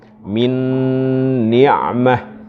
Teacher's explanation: Sentuhan di jalur hidung. Jadi antum baca min ni'mah nggak cukup min ni'mah, tapi min harus ada sentuhan di jalur hidung. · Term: Kamil bi gunnah